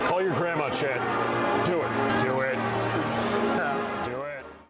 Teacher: This is a video that made me believe he's intentionally lowering his voice to some degree. Toward the end, you can kind of hear a bit of that fry as he's pushing out words. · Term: vocal fry